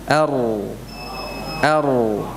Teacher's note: Huruf ra ini huruf yang keluar dari ujung lidah